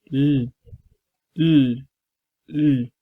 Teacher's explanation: That's a lateral sound. You have to use your tongue tip and hard palate.